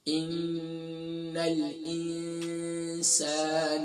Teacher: نون مشدد ہے، کمپلیٹ غنہ ہوگا، 2 مرتبہ پڑھا جائے گا